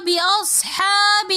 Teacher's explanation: بِأَصْحَابِ میں ہا کے اوپر کھڑا زبر ہونے کی وجہ سے ہم نے اس کو ایک الف کی مقدار کھینچ کر پڑھا